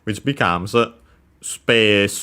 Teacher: The accent is on the P as expected just like in English space and so yeah space low high and then everything else low